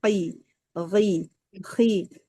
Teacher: Tetap tebal kan, tetap dengan mengangkat pangkal lidah qi gi khi hanya saja tidak seperti huruf shad. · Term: tafkhim nisbi